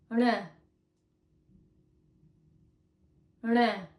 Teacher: r is pronounced by flicking your tongue outwards off the roof of your mouth. Start with your tongue at the back, and as you're flicking it outwards, slightly touch the roof of your mouth, like this. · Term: rana